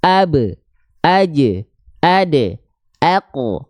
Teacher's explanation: Huruf-huruf yang ketika sukun punya sifat qalqalah, dia pasti ada bunyi vokal akhirnya.